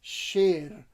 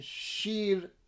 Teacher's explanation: The word for lion in Persian is sher, and the word for milk is shir. But in the Tehran pronunciation, shir, they're both pronounced the same way.